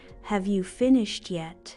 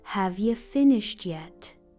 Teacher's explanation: how have you became have ya